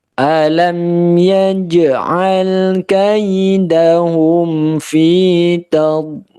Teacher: Alam, ya, lam mim sukunnya idhar, ya, yaj'al jimnya sukun maka dibaca qalqalah